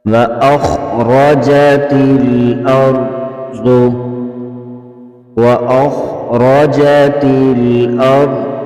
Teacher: خا حروف مستعلیہ میں سے ہے، اس کو پر پڑھیں گے، را کو پر پڑھیں گے، اسرا کو بھی پر پڑھیں گے اور ضاد کو بھی پر پڑھیں گے۔